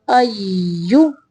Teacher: یا مشدد ہے اس لیے حمزہ کے ساتھ تھوڑی دیر ملائیں گے